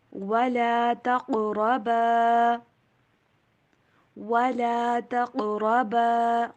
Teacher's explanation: قاف کے اوپر کلکلا، را کو موٹا